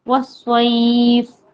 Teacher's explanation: یا ساکن سے پہلے آیا ہے زبر، پھر سے لین آیا ہے تو اس کو جلدی پڑھنا ہے